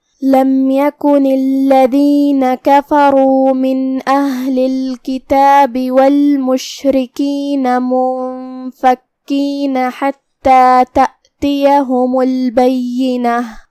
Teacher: آخری میں یہاں تا مدورہ ہے، ہم اس پہ رکیں گے تو ہا سے رکیں گے، مطلب ہم آخری میں ہا پڑھیں گے اور اسے ظاہر کریں گے